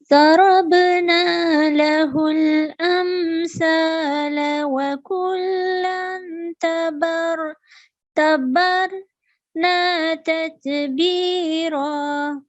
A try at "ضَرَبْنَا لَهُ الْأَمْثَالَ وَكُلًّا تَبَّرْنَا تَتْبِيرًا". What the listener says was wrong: Bakullang, again nasal sound, light nasal sound for 2 seconds. You have to prolong this nasal sound for 2 seconds. Bakullang. And here ba mushaddad, so it should be pronounced with a stress. Okay, clearly but with a stress. Tabbarna.